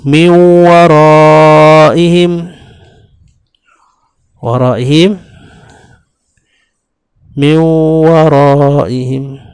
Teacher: nun mati bertemu dengan waw. Maka ketika itu dibaca min wara. Ini pun dipanggil idgham ma'al gunnah, iaitu idgham yang disertai dengan dengung.